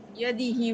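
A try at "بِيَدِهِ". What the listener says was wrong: না, এই যে বি আছে, বি, বাই।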